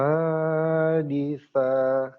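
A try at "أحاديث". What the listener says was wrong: D-nya panjang. Ahaditsa.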